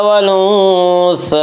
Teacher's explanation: खड़ा ज़बर को एक अलिफ के बराबर खींच कर पढ़ेंगे।